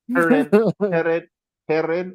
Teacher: Heren is with the rolling R if you're in Franconia